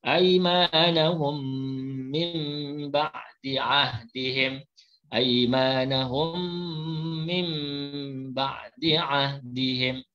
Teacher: Nun ditukarkan bunyinya kepada mim.